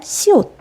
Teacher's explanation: 발음기관의 통로를 좁히면서 공기가 부딪히죠. 그럼 우리 파열음, 파찰음, 마찰음 중에 부딪히는 거 마찰음입니다.